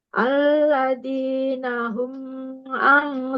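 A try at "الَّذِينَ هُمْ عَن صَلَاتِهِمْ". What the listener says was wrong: Ditahan dengungnya. Dengungnya ditahan.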